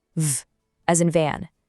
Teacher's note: V is just voiced air blowing through your teeth